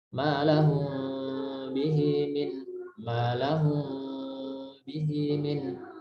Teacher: madhabnya dengan melonggarkan bibir. Ada celah yang bisa dilalui udara.